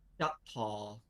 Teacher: it looks like we have some kind of perhaps palatal stop, then maybe with opening up into a diphthong, because palatal stops on their own like to transition quite frequently.